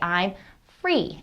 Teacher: kids will make they will say i'm free instead of three they'll usually substitute the f for the th